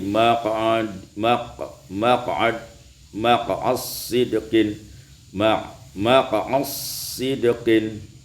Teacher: diidghamkan dal pada sad maka menjadi maq'ad sidqin, maq'as sidqin.